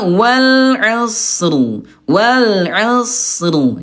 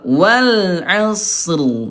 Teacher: Ini Bunda huruf sadnya alirkan dulu dia rakhawah dia lemah. Alirkan suaranya gitu ya. Ini ada ro tebal.